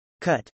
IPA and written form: k-ˈʌ-t (cut)